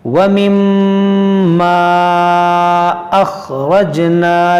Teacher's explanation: یہاں پر آپ غور کریں کہ میم مشدد ہے اور یہاں پر ہم غنہ کریں گے، اور یہ الف سے پہلے زبر ہے تو یہ الف مدہ ہے، اور الف مدہ کے بعد حمزہ دوسرے کلمے میں ہے تو یہاں مد منفصل کریں گے